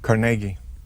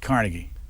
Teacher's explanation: emphasis on the middle syllable